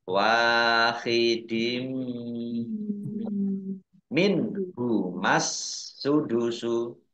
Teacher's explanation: Masuk dengan mendengung, yaitu mendengung mim. Kasroh tanwinnya tidak dibaca, tapi langsung dibaca mim. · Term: idgham bi gunnah